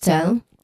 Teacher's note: it has a short e sound as in bed and there's of course a clear l sound there